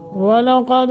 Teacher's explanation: واو کو موٹا قاف کو موٹا دال پہ قلقلہ